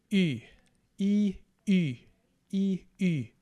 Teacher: essentially what you do is you take the E vowel e and you round your lips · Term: short y